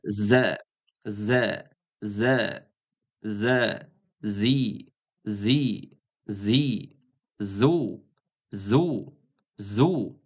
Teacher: Za harfining maxraji, za harfi tilning uchi qismi, uch qismi, mana tilning uchi pastki old tishlarning orqa tarafiga tegishi bilan talaffuz qilinadigan sirg'aluvchi harf hisoblanadi. Ya'ni mana shunday holatda mana z, z, z, z, zi, zi, zi, zu, zu, zu.